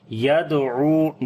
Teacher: دال کے اوپر قلقلہ کریں گے، کمزور قلقلہ ہوگا ، عین کو لمبا کریں گے، واو مدہ ہے یہاں پر،